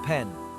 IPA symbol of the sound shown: p